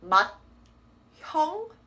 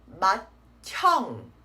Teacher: D plus the H makes a T sound.